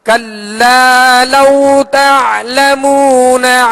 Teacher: यहाँ कौफ को पुर पढ़ेंगे, हुर्फ मुस्तालिया में से है, और आइन की अदायगी वस्ते हल्क से करेंगे